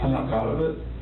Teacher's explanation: The unassertive self-repairs and rising intonation, asking, not stating, point to undisclosed information.